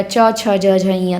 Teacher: वह व्यंजन जिसका उच्चारण स्थान तालव्य है तो च वर्ग का च, छ, ज, झ, ञ तालव्य है।